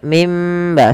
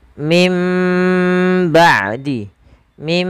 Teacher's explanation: suara nunnya diganti suara mim maka mim ba sambil ditahan dua harakat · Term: iqlab